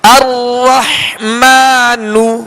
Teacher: نون پر پیش ہے لہذا اس کو کھینچیں گے نہیں، بغیر کھینچے بغیر جھٹکا دیے معروف طریقے سے پڑھیں گے، ہونٹوں کو گول کر کے